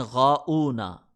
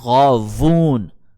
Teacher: واؤ کو حمزہ پڑھ رہے ہوتے ہیں، غاؤنا۔ ٹھیک ہے، تو غاؤنا پڑھنے پر وہ یہ کہیں کہ اٹ از وون، WOON وون، یہ وون ہے بھائی، الغاوون ہے، غاوون، یہ غاؤن نہیں ہے، غاوون ہے، غاوون، WOON وون، غاوون، it is not غاؤن، it is غاوون، ٹھیک ہے، یہ اس کو بتائیں، غاوون۔